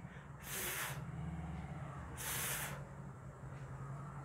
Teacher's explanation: when I pronounce this sound, I touch my lower lip with my upper teeth. Lower lip and upper teeth.